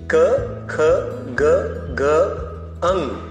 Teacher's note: ग घ अंग पांच के इस समूह को कंठव्य कहते हैं कंठव्य क्योंकि इसका उच्चारण करते समय कंठ से ध्वनि निकलती है